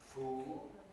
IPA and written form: fuːl (fool)